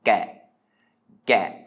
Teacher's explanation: this word is a low tone